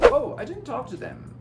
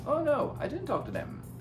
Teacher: O them perde o TH a maioria das vezes